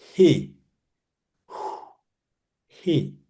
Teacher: Sur le souffle, Hé, on pousse le souffle. C'est pas comme Chet, comme on veut s'étrangler.